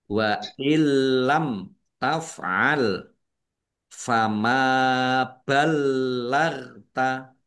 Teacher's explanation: Mim fathah alif mat tobi'i panjang 2 harokat. Lamnya dibaca double, ada tasdidnya, ditekan dan ditahan biar tampak doublenya. Ghain sukun bukan kolkola, jangan dipantulkan, jangan dibaca balagta, ya, jangan dibaca gitu.